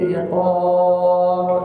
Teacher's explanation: iqab mad alif di sukun ba qalqalah kubra